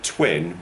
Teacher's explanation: the t in twin with lip rounding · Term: lip rounded t